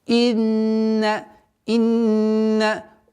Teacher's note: удержание в размере двух огласовок, назализация